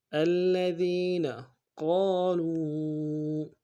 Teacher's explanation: قاف کو موٹا ادا کرتے ہیں، قاف کے ساتھ الف مدہ ہے، ایک الف دال میں کھینچیں گے